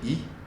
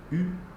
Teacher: They can be rounded or unrounded. So you say E, your lips are spread. You say U, they're rounded.